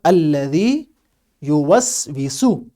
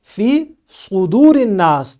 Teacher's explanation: آپ نے سین باریک پڑھنا ہے، لیکن جب ہم بولیں گے فی صدور الناس تو یہاں پر ہم نے صاد کو موٹا یعنی پر پڑھنا ہے، تاکہ سین اور صاد کی آواز میں فرق واضح ہو۔